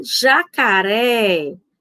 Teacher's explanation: na palavra jacaré, é a última, a mais forte